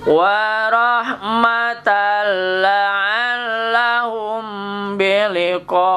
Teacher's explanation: tanwin bertemu lam, tan menjadi tal, idgham bila gunnah